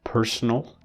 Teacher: So personal, the stress is on the first syllable.